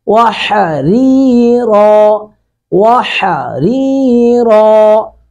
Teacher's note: جنتا وحریرا، وحریرا، ہا کو حلق سے ادا کریں گے، ری را کے نیچے زیر ہے، اس کو باریک کریں گے